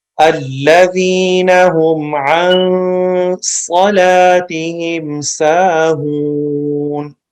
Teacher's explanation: صاد کے اوپر وسل ساؤنڈ ہے، صاد کو موٹی آواز میں پڑھیں گے. اس کے بعد سین کے اوپر وسل ساؤنڈ ہے، اس میں وسل ساؤنڈ پیدا کرنی ہے.